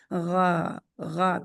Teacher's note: ये पीछे से हल्क के आखिरी हिस्से से मुंह की तरफ वाला हिस्सा जो होता है उससे निकलता है · حلق کے آخری حصے سے منہ کی طرف والا حصہ جو ہوتا ہے اس سے نکلتا ہے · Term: غین